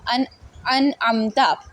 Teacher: نون ساکن کے بعد عین آیا، یہاں اظہار ہوا ہے، ہم لوگوں نے ٹھہرنا نہیں ہے، سکتہ نہیں کرنا، فوراً پڑھنا ہے